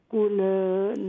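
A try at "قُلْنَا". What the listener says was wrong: نہیں قل اس طرح نہیں ہے. لام پہ سکون ہے.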